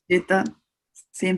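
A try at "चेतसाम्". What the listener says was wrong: Sam, not some. Sam. There's an A with a bar on it. Yeah. It's a big Sam.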